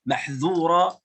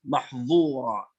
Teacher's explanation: الذال في كلمة محذورة والضاء في كلمة محظورة يخرجون من مخرج واحد